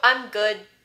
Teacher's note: your tongue does get to the alveolar ridge to make the d sound good but you don't release it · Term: no audible release